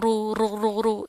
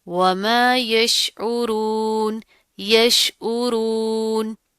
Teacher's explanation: اب یہاں پر کیا، عین کی آواز کو پروپر آپ نے نکالنا ہے، اور را پر کیا پیش آ رہی ہے، تو اس کو پر کر کے یعنی موٹا پڑیں گے ہم، ٹھیک ہے. اس کی آپ نے اس طرح ساؤنڈ نہیں کرنی، یش او رو رو رو رو، اس طرح نہیں کرنا، ٹھیک ہے.